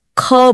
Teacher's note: अपने हाथ पर ख के टाइम एक तेज हवा का झोंका फील होगा। यही एक्स्ट्रा हवा उसे महाप्राण बनाती है।